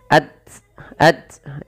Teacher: dalam membaca ta sukun urutannya adalah kita membaca dengan syiddahnya dan baru dengan hamasnya